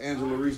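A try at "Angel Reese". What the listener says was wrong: Her name is not Angela.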